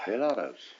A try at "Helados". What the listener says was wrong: Why'd you say it so fast?